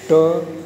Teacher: मूर्धा को स्पष्ट किया गया कि जो मसूड़े का पिछला भाग होता है, जहाँ पर जीभ जाके सकती है, वहाँ से ट का उच्चारण किया जाता है